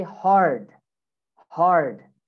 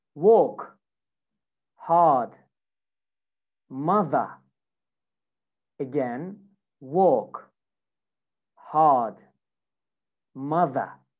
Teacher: in British English, you don't say the R, okay? But in America, we say the R